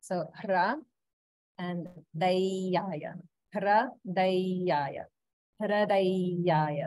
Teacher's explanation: make sure you're pronouncing it like hra, that's a, not the r vowel